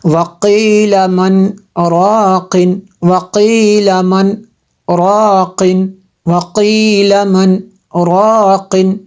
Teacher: آواز روک کر سانس لیے بغیر آگے پڑھنے کو جو ہے سکتہ کہتے ہیں، یعنی آواز رک جائے اور سانس جاری رہے۔